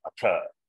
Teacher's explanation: that takara is mahaprana, atha. He gives the meaning sadhana chatushtaya sampatti.